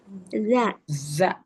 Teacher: kalau za, dia ujung lidah kita keluarkan sedikit ke gigi seri atas.